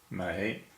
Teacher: it is second tone, a rising tone